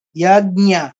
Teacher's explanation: বর্গীয় জ দিয়ে ধরবো, ইয় দিয়ে ছাড়বো,